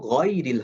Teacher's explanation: গাইন যেহেতু মোটা হরফ এই সাউন্ডটা হবে অ সাউন্ডে